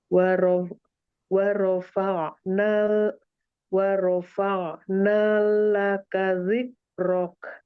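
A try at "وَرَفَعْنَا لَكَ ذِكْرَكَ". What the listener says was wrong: Nah, jangan sampai masuk ke lam. Wa rafa'na laka dzikrak.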